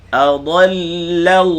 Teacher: Jangan muncung ketika kita sebut dad berbaris atas. Adalla la nipis, Allah baca tebal.